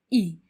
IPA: ɪ